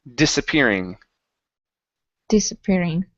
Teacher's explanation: Instead of disappearing, it's dis, an unvoiced S.